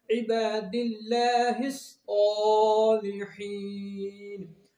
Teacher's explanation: عباد اللہ الصالحین، اور سواد کو بکھرا زبر، اس کو ہم ایک الف یعنی 2 حرکات کے برابر کھینچ کے پڑھیں گے۔ سواد حروف مستعلیہ میں سے اس کو ہم پور پڑھیں گے یعنی موٹا پڑھیں گے۔